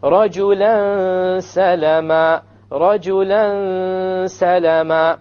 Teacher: You have a tanween followed by a seen, so it will be ikhfa, and there will be a ghunna. Now we said the ghunna is the sound that comes from nose.